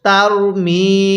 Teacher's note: মিমের মধ্যে আমরা এক আলিফ টান দিব